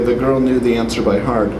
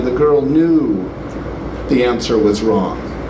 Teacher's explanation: what we do is extend the vowel just before a phrase boundary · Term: vowel extension